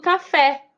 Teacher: de frente para trás eu tô falando por exemplo do café o fé é minha sílaba tônica então é uma oxítona